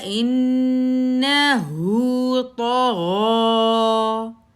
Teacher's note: 1 count, نون کے اوپر زبر 1 کاؤنٹ، حمزہ کے نیچے زیر، آگے نون مشدد آ رہا ہے، پہلے نون کے اوپر 3 کاؤنٹ کا غنہ کریں گے